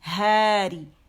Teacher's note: ہے عکس الحلق سے نکلے گی